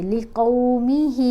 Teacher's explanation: ہا کو تین الف جتنا ہم نے لمبا پڑھنا ہے